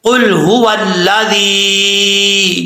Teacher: قاف لام پیش قل، قل هو الذی، یہاں پہ ہاں بھاری ساؤنڈ کے ساتھ پڑھا جائے گا اور واو کو پڑھتے وقت ہونٹ گول کریں گے